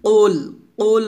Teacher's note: কফ একটা পাল্টা আওয়াজ দিয়ে মোটা উচ্চারণ করবেন